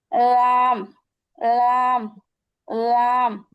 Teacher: জিহ্বার আগার কিনারা সামনের উপরের একপাশের দাঁতের গোড়ার সঙ্গে লাগবে। সামনে আমাদের যে উপরের যে দাঁত আছে উপরের দাঁতের একপাশে লাগবে।